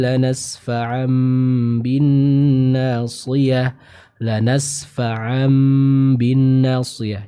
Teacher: mengubah nun ataupun tanwin menjadi huruf mim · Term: iqlab